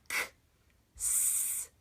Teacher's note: make sure that you do it voiceless, and make sure you get rid of that extra at the end. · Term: No voice